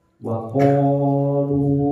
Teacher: Misalkan waqalu itu kan di situ ada fathah ya, diikuti alif kan lepas dia di rongga. Waqalu lu itu kan berarti selama mulutnya ini bolong, tenggorokannya bolong pasti bisa mengucapkan huruf mat ini ya.